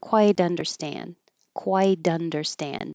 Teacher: This T changes to a D, so when it connects, it'll sound like dunderstand.